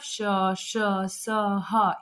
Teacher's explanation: फिर देखिए उसमें यह संघर्षी व्यंजन, ठीक है, मतलब श, श, स, ह, इन वर्णों का उच्चारण करने से मुंह से मतलब गर्म हवा निकलती है, ठीक है। मतलब इन वर्णों का उच्चारण करने में वायु क्या होता है, घर्षण के साथ बाहर निकलता है